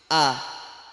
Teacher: Tenggorokan, nah ini mahrotnya huruf A, hamzah. Tenggorokan yang paling bawah. Baca A, jangan O.